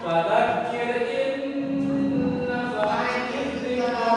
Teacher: seolah-olah huruf N di nun mati atau tanwin tidak dibaca dan sambil didengungkan serta ditahan sekitar 2 harokat sebelum disebut jelas huruf di depannya. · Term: idgham bi gunnah